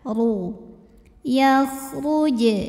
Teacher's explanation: nun sukun masuk ke ya W disertai bunyi dengung tahan wakj huruf ro dibunyikan secara tafkhim karena barisnya damah maka dibacanya tebal maka lidah angkat